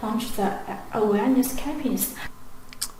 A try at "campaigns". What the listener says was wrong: But the word is campaign, not campions.